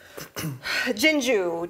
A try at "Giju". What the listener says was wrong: There's no N. I would call it Giju.